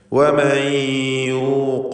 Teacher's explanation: ഖാഫിന് തഫ്ഖീം കൊടുക്കുക. സ്വരഭാരത്തോടെ ഖാഫിനെ ഉച്ചരിക്കുക. ഇസ്തിഅലാഇൻ്റെ ഹർഫാണെന്ന് സൂചിപ്പിച്ചു.